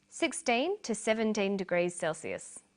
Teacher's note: 17 degrees Celsius these are both read out the same way notice that the two is unstressed